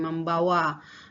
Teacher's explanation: yang diawali dengan bunyi voice stop atau voicel palatal stop sehingga meng itu akan berubah atau berasimilasi menjadi mem ketika melekat pada kata bawa